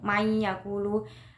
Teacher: non sukun bertemu ya berarti idgham bigunah, cara membacanya dengan dimasukkan dan mendengung